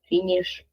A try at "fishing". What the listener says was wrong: Fishing. Fishing. Fishing. Fishing. There isn't sound. There isn't the consonant N in this word.